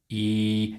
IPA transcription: iː